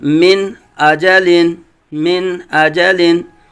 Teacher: نون کو بالکل ظاہر کریں گے، واضح کریں گے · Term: اظہار کا قاعدہ